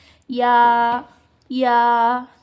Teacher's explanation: जुबान के बीच वाले हिस्से से अदा होते हैं और ऊपर के तालू से।